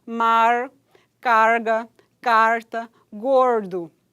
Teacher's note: O palato duro é articulador passivo e a ponta da língua é articulador ativo. Ocorre no dialeto caipira e no sotaque norte-americano, do norte-americano falando português. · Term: retroflexas